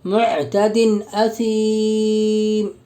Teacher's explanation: دو زیر کی تنوین کا حمزہ میں اظہار حلقی ہوگا، یعنی بغیر غنہ اور اخفا کے جلد پڑھیں گے